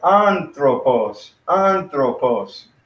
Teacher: We got anthropos. We got three syllables there. So the accent is on the first one.